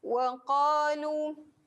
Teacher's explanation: qa dua harakat tekan dekat pangkal lidah. Ini kena menghimpit ke lelangit, melekat ke kerongkong. Ini saya highlightkan huruf yang berada di belakang pangkal lidah ni, terutamanya qaf ni.